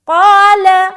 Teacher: آگے, قال, قاف الف زبر قا, الف مدہ کریں گے, الف بھی موٹا پڑھا جائے گا کیونکہ موٹے حرف کے ساتھ آ رہا ہے